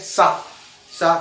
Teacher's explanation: दांत के आसपास से हवा निकल रही है इसमें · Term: वत्स्र